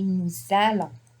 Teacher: Normally the S is not pronounced, but on appelle ça la liaison.